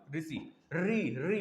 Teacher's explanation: मूर्धन्य देखना, जीभ पलटी, तुरंत पलटेगी जीभ, री बोल के देखना।